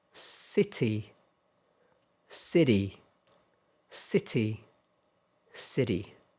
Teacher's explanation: in American English, the T between two vowels. So here's vowel and T and another vowel. Sometimes it sounds a little like a D.